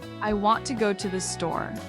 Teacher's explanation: Want and store are punchy and strong. Everything else blends together.